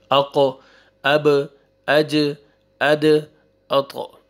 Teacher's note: क़लक़ला आएगा, double sound आएगा।